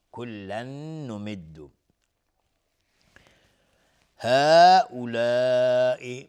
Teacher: تنوین بعدش نون ادغام باغن